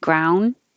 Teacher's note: you don't have to release the d ground hold it in the d position